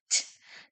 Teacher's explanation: My teeth are showing and my tongue is touching the top of my mouth, right behind my teeth.